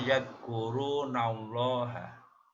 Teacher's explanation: kalimat Allah di dahulu sebelumnya ada harakat fathah pada huruf nun, maka dibaca tafkim, dibaca tebal, membacanya yadkurunallaha.